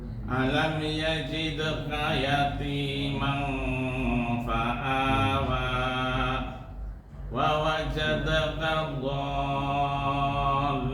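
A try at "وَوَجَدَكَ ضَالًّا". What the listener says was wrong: Masih lam, enggak lam. Wa wajada, perhatikan. Wa wajadaka dhallan. Gigi nempel ke bibir.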